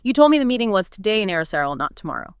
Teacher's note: The rise-fall in today strongly highlights the discrepancy, the unexpected difference.